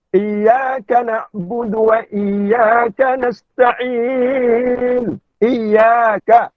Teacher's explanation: Mat asli mutlak. Ya, 2 harakat. Kan? Ya, mat asli bukan 4 harakat.